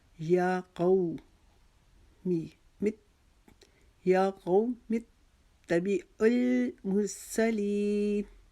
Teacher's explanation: قو کو ہم نے ایک الف کے جتنا لمبا کرنا ہے